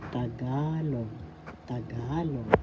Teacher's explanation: pronunciation oral First syllable second syllable ka third syllable log the the accent is in the second syllable